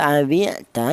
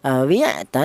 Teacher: Di sini ada awi'ta yaitu ada huruf ain, di mana huruf ain ini termasuk huruf halak, yaitu artinya huruf halak itu huruf-huruf yang keluar dari tenggorokan, atau nama lain itu huruf idhar. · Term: idhar halki